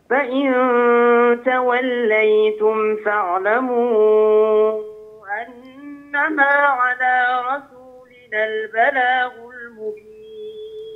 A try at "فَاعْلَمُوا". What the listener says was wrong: أشبع المد قليلا، فاعلموا ست حركات.